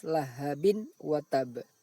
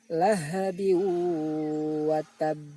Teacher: bunyi tanwin tersebut dimasukkan ke dalam bunyi waw sambil didengungkan. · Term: idgham bi ghunnah